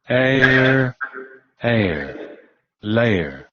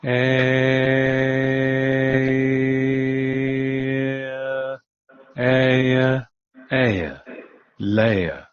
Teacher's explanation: cómo en el norteamericano aparece el rotacismo, la vocal rótica, pero en el inglés británico no